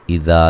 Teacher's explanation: اذا ذال کو نرم ادا کریں گے، الف مدہ ہے